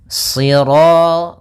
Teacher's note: pangkal lidah kita terangkat dan melekat karena dia huruf idbaq Sir kemudian rnya ro tafkhim Kemudian pada lafal ro ada hukum